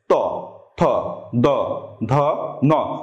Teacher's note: দাঁতে সামান্য একটু দাঁত থেকে জিহ্বাটা বের হয়ে আসছে, ত, থ, দ, ধ, ন, অর্থাৎ দাঁতে চাপ লেগে জিহ্বাটা পিছনে যাচ্ছে। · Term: দন্ত